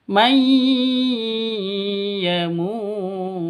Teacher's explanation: nun mati bertemu dengan Ya cara bacanya nya masuk ke ya disertai dengung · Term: Idgham bighhunah, idgham bi gunnah